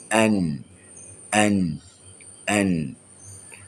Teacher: Pertemuan hujung lidah dengan lelangit dalam keadaan yang ringan. An. Okey, dia tidak terlepas. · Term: huruf Nun